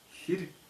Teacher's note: Так как гласная передняя, то и щелевая согласная передняя.